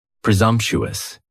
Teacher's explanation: presumptuous has 4 syllables. And the stress is on that second syllable. And the S almost sounds a little more like a Z.